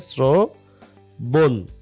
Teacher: শ্রবণ, শ্রবণের বেলায় রফলার আগে তো অ ছিলই, সেটা ওকার তো হলেই, কিন্তু এইখানে শ্রবণের উচ্চারণ কিন্তু তালব বসা হয়নি, এখানে শ্রবণের উচ্চারণ কিন্তু কি হয়েছে, মানে তালব বসার উচ্চারণ কিন্তু দন্তসা হয়েছে। তো তালব বসার উচ্চারণ যেহেতু দন্তসা হয়েছে, তাই এই দন্তসার উচ্চারণ এখানে দেওয়া হয়েছে শ্রবণ, ওকার।